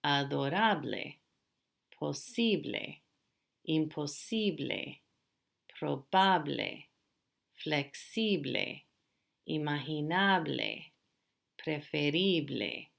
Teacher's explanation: So the stress is on the second to the last syllable. There's no accent mark needed.